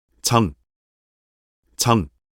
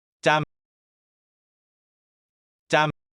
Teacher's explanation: the initial sound of jiut, a basic sound, and the initial sound of songjiut, a fortis sound